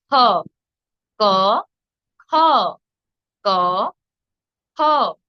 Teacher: খ হলো মহাপ্রাণ, তাই আমরা খকে বেশি জোর দিয়ে উচ্চারণ করব, যেমন খ। ক, খ, ক, খ।